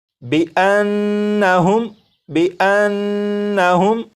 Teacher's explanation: جب نون کو پڑھیں گے تو غنہ کریں گے